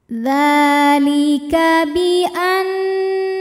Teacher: dibacanya berdengung bunyi n tahan sampai ada suara masuk hidung kurang lebih dua harakat · Maka cara bacanya adalah dzal dibaca panjang 2 harokat saja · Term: ghunah musyaddadah, mad tabi'i muqaddar